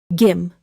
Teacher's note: 김 is one syllable. The final consonant is the sound of 미음, so close your lips gently.